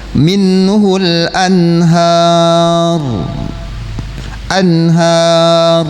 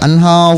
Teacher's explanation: Anhar berarti tarqiq, tipis ya, sementara ro matinya didahului harokat fathah, maka wajib dibaca tafkhim, tebal gitu ya